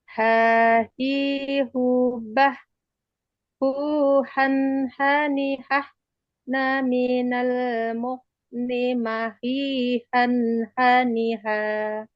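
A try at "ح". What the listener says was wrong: Ya, tinggal istiqomahnya Ibu ya, agak sedikit lagi ditekan.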